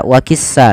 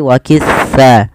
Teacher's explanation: di melafalkan huruf tas Jangan dibaca dengan sa wakissa tapi wakisa ujung lidah kita menempel dengan gigi di atas agar sesuai dengan makhrajnya